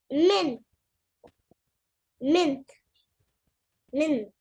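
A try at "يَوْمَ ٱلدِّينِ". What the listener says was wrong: मित सही था क्यों चेंज कर रहे हो बार बार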